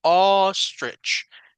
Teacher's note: no es ni O ni A, es un en medio